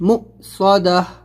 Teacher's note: حمزہ ساکنہ کو پڑھنے میں جھٹکا، یہ واو نہیں پڑھیں گے